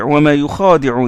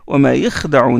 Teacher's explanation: il y a prolongation du kha, alors que dans Hafs vous avez wa ma yakhda'un, il y a soukoun du kha